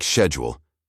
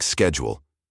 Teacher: Whether schedule should be pronounced with a soft sh sound, like schedule, favored by the English upper class, or with a hard sk sound, like schedule, which was common in Scotland and other parts of Britain.